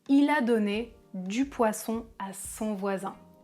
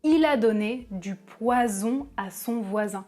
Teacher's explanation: le [s] est appelé une consonne fricative alvéolaire sourde (ou non voisée) alors que le [z] est appelé une consonne fricative alvéolaire voisée (ou sonore) · Le [s], les cordes vocales ne vibrent pas, le [z] les cordes vocales vibrent · le [s] est sourd alors que le [z] est voisé